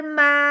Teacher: اس میم کو بھی الف کے ساتھ ملاتے ہوئے 1 الف کے برابر لمبا کرنا ہے، کیونکہ الف سے پہلے زبر آ جائے اس الف کو 1 الف کے برابر لمبا کیا جاتا ہے۔